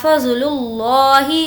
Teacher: لفظ اللہ کو پر یعنی کہ موٹا پڑھیں گے کیونکہ اس سے پہلے پیش ہے.